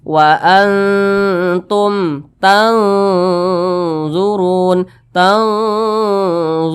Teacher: tergolong kepada ikhfa Hakiki ausat Nah jadi tadi Ikfa Hakiki ausat cara bacanya itu antara samar dan dengung itu seimbang jadi antara bunyi n dengan bunyi Eng itu seimbang di tengah-tengah dia